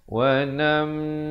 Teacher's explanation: Wa namna'kum, di sini didengungkan 2 harakat. Idgham mislan saghir, mim mati bertemu mim, jangan lupa dengungkan 2 harakat.